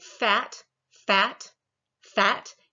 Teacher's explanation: your vocal chords do not start vibrating until you get to the vowel sound